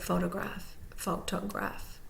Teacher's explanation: fo then is primarily stressed graph is secondarily stressed and you see that schw e right in the middle when